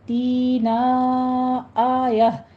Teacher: تا میں حمزہ پر جھٹکا دیں گے ، تی میں یا مدہ ہے، 2 کاؤنٹ کرنے ہیں، نا